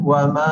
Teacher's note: Dan seterusnya yang dibulatkan adalah mad jaiz mufassir, kerana apabila huruf mad berjumpa dengan huruf mad di dalam dua kalimah yang berlainan, itu menunjukkan mad jaiz mufassir, dan bacaannya adalah secara panjang 4 atau 5 harakat